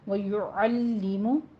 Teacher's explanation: لام کسرہ کے ساتھ باریک آواز رکھیں گے، الے نہیں کہیں گے۔